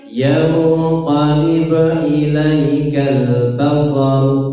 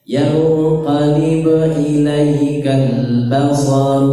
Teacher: ilaikal lamnya ditasydid tidak boleh disukun, tidak boleh mantul.